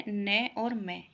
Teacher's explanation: जब हम बोलते हैं तो हवा नाक से निकलती है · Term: नासिका